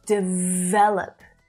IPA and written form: dɪˈ vel.əp (DEVELOP)